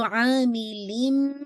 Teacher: आपने ना सिर्फ मर्ज करना है तनवीन की आवाज़ को, साथ ही आपने होल्ड भी करना है फॉर 2 काउंट। यहाँ से देखिए अमल आमिलिन मिनकुम, तो आमिलिम, ये जो मैं होल्ड कर रही हूँ, लिन नहीं पढ़ रही, लिम पढ़ रही हूँ, ठीक है? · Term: अकमल गुन्ना